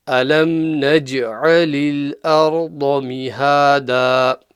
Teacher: the dad is full mouth. It's a permanent full mouth letter.